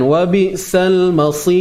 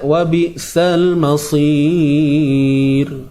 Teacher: Ra yang mati sebelumnya terdapat huruf ya yang mati dibaca nipis. Tak kisahlah ya tu ya lin ke ya mat ke, tetap dibaca dengan nipis.